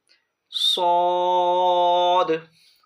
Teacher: صاد میں سیٹی کی طرح تیز آواز نکلے گی